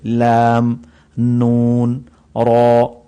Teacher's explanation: اور اس کے بعد حروف ذلقیہ ہیں لام، نون اور را. یہ زبان کی کروٹ کے آخر سے زبان کی نوک تک کے حصہ سے جب وہ اوپر کے اگلے دانتوں کے مسوڑوں سے لگے تو اس وقت یہ نکلے گی لام، نون، را.